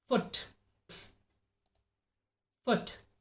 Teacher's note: The tongue receives short tension, short tightness, and the lips moved and shaped from the stretched position to the rounded position. U, like foot, foot. · U, like foot, foot. The tongue is in the back of the mouth. It has a backward shift, a backward movement. The body of the tongue is raised high and is as close as to the roof of the mouth. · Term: short U sound